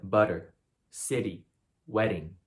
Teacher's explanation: it's a very rapid tongue tap against the roof of your mouth so it's very fast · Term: tongue flap r